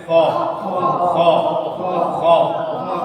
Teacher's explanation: خا یہ پر ہونے والا لیٹر ہے، یہ ہمیشہ موٹا پڑھا جائے گا. پر مینس موٹا، منہ کو گول کرتے ہیں تھوڑا اور اس کی آواز ادا کرتے ہیں خا خا خا. ٹائگر ساؤنڈ جیسے ہوتی ہے اخ، ایسا خا خا.